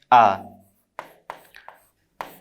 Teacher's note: आ बोलने पे हम देखते हैं कि हमारा मुख सबसे अधिक खुलता है अन्य स्वर वर्णों का उच्चारण करने की तुलना में। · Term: विवृत स्वर